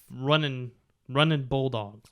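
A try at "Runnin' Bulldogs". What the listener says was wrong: It's like Raging Cajuns. Running Bulldogs, Raging Cajuns. No G on the end of it.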